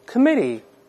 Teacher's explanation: 读快点之后呢，中间这个▁t▁又会轻轻浊化